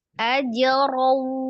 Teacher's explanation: Diidghamkan, dilebur, ditasdidkan ke huruf waw, disertai dengan dengung. Ajraw ya. Kalau yang tingkatan gunnahnya untuk yang idgham bi gunnah itu masuknya paling sempurna akmal matakun, sama sebanding dengan nun tasdid dan mim tasdid ya.